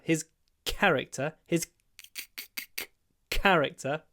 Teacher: to Mark the stress we don't do character we do a pause before the C · We do a pause before the k.